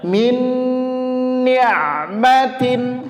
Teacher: ditahan dua harakat dengungnya